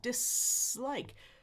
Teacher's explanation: That should be s like a snake. S what we call unvoiced dislike. But he said D.